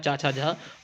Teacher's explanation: तालू से छ का उच्चारण होता है